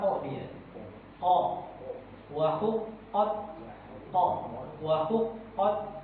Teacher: sifatnya dia pangkal lidahnya itu diangkat jadi menimbulkan suara yang tebal. Jadi condong suara qo dia qo wah hu qot qo wah hu qot nah gitu Pak ya. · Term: huruf qf